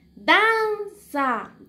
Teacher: aquí levanté la voz entonces dan es la sílaba tónica